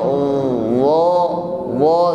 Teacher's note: Mengucapkan wa, lidahnya terangkat, suaranya pun naik, maka bunyinya harus tebal, bukan sekedar za, bukan za tetapi wa.